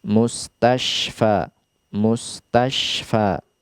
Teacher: Adapun shin yang bertitik 3 di sana, makhrajnya adalah lidah bagian tengah. Naik ke langit-langit, akan tetapi ada celah di sana, tidak sampai menutup jalannya udara ataupun suara